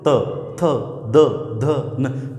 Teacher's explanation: और ल तथा स ये वर्ण हैं जिनका उच्चारण करते समय जो जीवा है वो हमारे किसकी सहायता लेती है, दांतों की, अर्थात जीवा जो है वो दांतों से टकराती है। आप बोल के देख लो, त थ द ध न, तो ये जो 5 वर्ण अपन बोलते हैं तो सीधी जीवा जो है वो किसकी सहायता लेती है या फिर किससे टकराती है, सीधी दांतों से टकराती है। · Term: त वर्ग